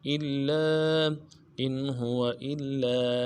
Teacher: لام کے اوپر تشدید زور دیں گے، لام کے بعد الف مد ایک الف لام میں کھینچیں گے